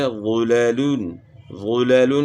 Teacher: ہدایت نمبر 2، بعض کلمات میں کچھ حروف موٹے اور کچھ باریک پڑھے جانے والے ہوتے ہیں، جیسے غلیلون غلیلون میں غ موٹا اور لام باریک پڑھا جانے والا حرف ہے، تو کہیں ایسا نہ ہو کہ غ کو پر ادا کرتے وقت لام کو بھی پر ادا کر دیا جائے اور نہ لام کی وجہ سے غ کو باریک کیا جائے۔